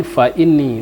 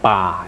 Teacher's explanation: makharijul huruf fa agak sedikit hembusan, fa bukan pa gitu kan